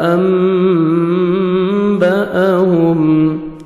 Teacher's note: انبأهم، حمزہ middle میں حمزہ بھی ہے، میم ساکن کا اخفا ہے، میم ساکن کے بعد با آ رہا ہے، نوز میں ساؤنڈ لے کے جائیں گے